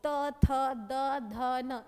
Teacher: इसमें दोनों दांतों के बीच में हमारा जीवा टकराता है तवर्ग की लाइन में।